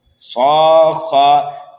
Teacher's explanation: گول تا کو ہم ہائے ساکنہ سے بدل دیں گے۔ صاخہ، دیکھیے یہاں پر مد لازم پائے جانے کی وجہ سے اس صاد کو ہم کھینچیں گے 3 الف کے برابر۔ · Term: وقف بالابدال